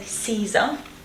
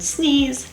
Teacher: you've got the sound E, the long front close sound E